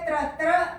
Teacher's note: ये देखिए र का मूर्धा और त का उच्चारण स्थान वो है दांत है। तो त्र का उच्चारण स्थान क्या हो जाएगा, वो हो जाएगा दांत और मूर्धा